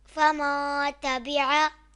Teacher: یہاں نون ساکن کے بعد حروف اخفا میں سے تا آ رہا ہے تو یہاں اخفا ہوگا، یعنی غنہ کر کے پڑھیں گے۔ غنہ کو ہم ایک الف کی مقدار کھینچ کر پڑھتے ہیں۔